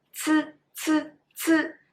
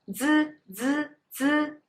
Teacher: Basically, exactly same lip position, the same teeth position, same tongue position. But when you pronounce c, the air is stronger. So you make the air out.